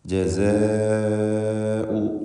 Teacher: ദീർഘാക്ഷരമായ അലിഫിനെ 4-5 ഹറക്കത്തിൻ്റെ അളവിൽ ഈ പദത്തിൽ ദീർഘിപ്പിക്കൽ നിർബന്ധമാണ്. മദ് മുത്തസിൽ വാജിബ്.